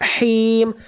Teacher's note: Jadi dilafalkan dari tengah tenggorokan, dirasakan dia ada bisikan nafas bisiknya dulu keluar.